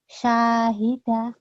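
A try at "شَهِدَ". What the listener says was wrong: Sya-nya pendek. Syahida gitu.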